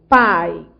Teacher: Você tem um ditongo decrescente. Você foi da vogal A para a semivogal I.